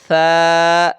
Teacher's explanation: اس پہ سیٹی کی آواز نہیں آئے گی